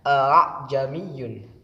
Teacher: A'jamiyyun, di sini adalah bacaan tasghil, bacaan tasghil yaitu membaca dua hamzah yang kedua dibaca samar antara hamzah dan alif. Jadi hamzah yang pertama tetap dibaca jelas, akan tetapi hamzah yang kedua dibaca samar.